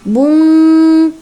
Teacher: Karena tanwin pada huruf ba itu bertemu dengan qo maka dibaca samar keqo bung gitu ya. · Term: ikfaqi, ikhfa hakiki